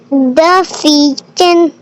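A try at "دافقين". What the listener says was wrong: دال کو کھینچیں.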